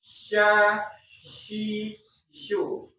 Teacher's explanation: Di tengah lidahnya, di langit-langit tapi nggak nempel karena di situ nanti ada udara di situ.